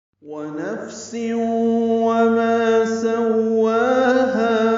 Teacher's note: واو ہونٹوں کی نا تمام گولائی سے ادا کریں · ادغام ناقص مع الغنہ، و ہونٹوں کی نا تمام گولائی سے، ما الف مدہ ہے، دو حرکات لمبا ہے ، سواہا سین کو واو سے ملانا ہے، وا اور ہا · ہا اقصی حلق سے ادا کریں گے، حلق کا وہ حصہ جو سینے کی جانب ہے